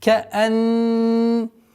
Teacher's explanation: назализация в размере двух огласовок у буквы нун